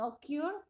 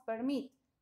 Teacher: el estrés está en la última sílaba